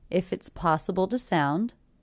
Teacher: one word ends in a consonant sound, the next word begins with a vowel sound. If it's, and I do definitely hear those connecting together.